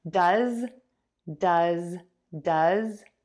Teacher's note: For does which means to perform, we are going to add that short uh sound. You can see my mouth is relaxed, my tongue is relaxed, and that vowel just puffs out. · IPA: /dʌz/